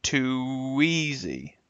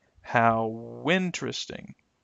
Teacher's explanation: we're using a consonant glide sound to help connect one vowel to the next one